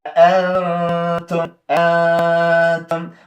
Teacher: کله به چې شاته نون ساکن تا راغله تا حرف د اخفا و موږ به پټولو